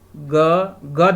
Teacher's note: ग जब बोलेंगे तो देखिए कंठ से आ रहा है